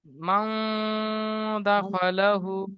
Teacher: নুন সাকিনের আওয়াজকে নাকে তুলে গুণনা করে একালি পরিমাণ টান দিয়ে পড়তে হবে।